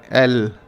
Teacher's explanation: एल में हम अपनी जीभ के अगले हिस्से से अपने ऊपर के दांतों के पिछले हिस्से को टच करते हैं और फिर जो हमारे मुंह की हवा है उसको आसपास के हिस्सों से निकलने देते हैं, तब हम एल बोलते हैं।